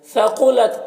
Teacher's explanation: قاف حروف مستعلیہ میں سے پر پڑھیں گے